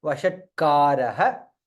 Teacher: Vashat ta is half there.